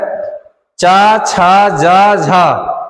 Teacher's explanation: ये तालू से बोले जाते हैं